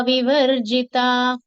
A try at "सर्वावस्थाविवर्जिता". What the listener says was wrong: Just put more stress on this tha. Here tha gets doubled. Sarvavastha Vivarjita.